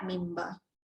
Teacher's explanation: bibir anda rapat menghasilkan 2 sebutan huruf iaitu mim dengan ba, mimba. Mimba, bibir rapat mimba.